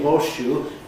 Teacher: you're pronouncing what corresponds to the letter S in the spelling of the word horse, you're pronouncing it as a sh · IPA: /ˋhɔːʃʃuː/